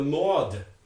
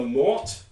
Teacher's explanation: here's an allomorph with a final voiced stop and here's an allomorph with a final voiceless stop